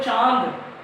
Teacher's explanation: आपके बोलने में ध्वनि नासिका से उत्पन्न हो। थोड़ा सा म स्वर या न स्वर की ध्वनि उत्पन्न हो, थोड़ा सा आप मुंह बंद नाक दबा करके बोलते हैं ऐसे निकलता है।